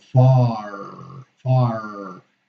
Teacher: Okay, so as a general rule, except certain regionalisms, you know, in the US, at the end of the syllable, we pronounce the R